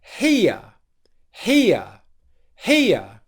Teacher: here in terms of volume we're going high low high low the uh schwa sound is the second part of that diphthong it's there but it's quieter and shorter · make sure that you're putting more stress on the first part of the diphthong than the second.